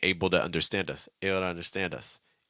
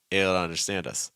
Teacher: that first way where I'm saying able to does some heavy lip contact right and that second that's much weaker contact